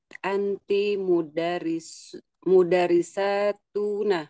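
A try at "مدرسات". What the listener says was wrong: Mudarrisat. Mudarrisat sa panjang.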